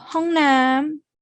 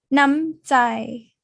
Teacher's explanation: The word Nam here is long when you place it as the second syllable, but it is going to be shortened when you place it as the first syllable. So Hongnam, Namjai. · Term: vowel length